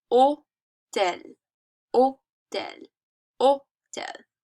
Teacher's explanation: Because in French, we don't pronounce the H.